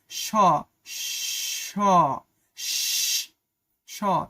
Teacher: উচ্চারণে শ্বাস অনেকক্ষণ ধরে রাখা যায় এবং শীষের মত আওয়াজ হয় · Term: শীষ ধ্বনি